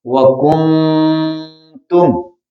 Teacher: یہاں پہ اخفاء یعنی نون کو اس کے مخرج میں چھپا کر ادا کریں گے